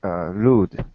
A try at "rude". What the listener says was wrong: Okay, because remember, you just said lewd. You said lewd twice and rude once. Rude. Remember, do not touch your tongue to your teeth. Okay, and then it might become easier if your tongue does not touch your teeth.